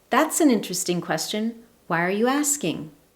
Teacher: Combination of a higher tone in rising intonation indicates curiosity and interest. It also maintains an open friendly feeling in the conversation while you determine whether or not this is a question you want to answer.